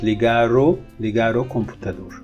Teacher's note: So here you would say ligar, but if you want to say it in the sentence, if you speak at a normal pace, the R, because of O, will be pronounced and it will be flapped.